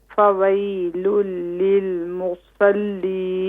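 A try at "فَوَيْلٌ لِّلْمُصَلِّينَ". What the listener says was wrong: فا کو مت کھینچے.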